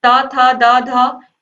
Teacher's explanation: इनका उच्चारण दंत से हो रहा है